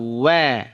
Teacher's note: Wa dari dua bibir monyong kan ya di awalnya di monyongkan baru dibuka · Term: huruf wau